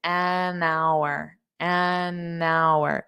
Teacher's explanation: the h is silent which is why we have an because an is used with when the noun starts with a vowel sound not spelling but sound. · So you can hear that N in front of hour as well.